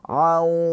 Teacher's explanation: Jadi, suaranya keluar dari hidung. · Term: idgham bighunah